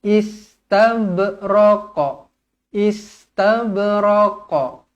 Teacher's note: Ba dibaca qalqalah sughra melantun, jangan istabraq.